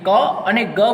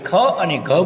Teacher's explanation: ક અને ગ બોલવામાં આપણને ઓછો શ્વાસ જરૂર પડે, જ્યારે આપણે ખ અને ઘ બોલીએ ત્યારે એ વધારે શ્વાસની જરૂર પડે છે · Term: અલ્પપ્રાણ અને મહાપ્રાણ